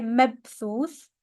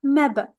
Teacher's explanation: If you are familiar with the qalqala, the echo sound, then we have one right here with the ba with the sukun.